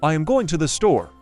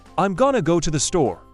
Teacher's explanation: Notice how we don't really put emphasis on the word to or the. In fact, we kind of rush those words. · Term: unstressed syllables